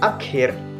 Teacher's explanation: Bunyi ak termasuk bunyi dorsovelar, geseran, dan bunyi bersuara.